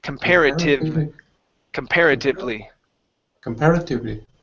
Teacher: make sure to use your teeth and your lips your bottom lip to pronounce that V